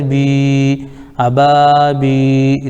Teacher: یا ساکن سے پہلے با کے نیچے زیر ہے اس لیے یا مدہ ہوگا، ان کو تھوڑا کھینچ کر پڑھیں